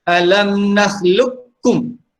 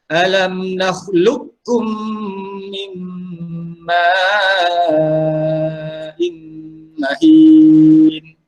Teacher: Baik, di sini kita boleh baca sama ada dibaca dengan idgham kamil ataupun idgham nakis. Idgham kamil ni maksudnya kita masukkan huruf qaf itu ke dalam huruf kaf secara sempurna.